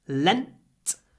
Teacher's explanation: in Lent lent I clip the n and do a little pause before the unvoiced T at the end